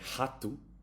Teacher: So if the R is in the beginning, you would say rato. It's like an H, like a very soft rato.